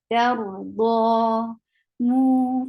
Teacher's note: For dhamma, circle your lips. It is 2 counts long vowel, because alif sakina, waw sakina, followed by dhamma, is a 2 counts long vowel.